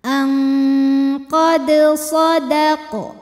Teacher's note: dal dipantulkan dengan pantulan yang kecil. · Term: qalqalah sughra